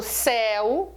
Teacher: quando eu falo céu o ditongo ele é aberto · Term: ditongos abertos